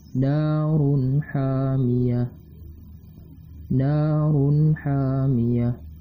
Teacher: na berbaris fathah dan terdapat alif, maka dihukumkan sebagai mad tabi'iyah dan panjangnya 2 harokat.